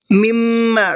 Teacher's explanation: مما دونوں میم کے اوپر تشدید ہے، دونوں میں غنہ کرنا ہے